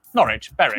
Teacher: W at the start of the final syllable is silent.